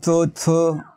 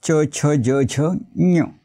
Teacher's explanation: ज झु बघा मराठीमध्ये आपण च छ असे उच्चार करतो पण संस्कृत मध्ये च ला थोडा य लागलाय अशा पद्धतीने उच्चार करायचे आहेत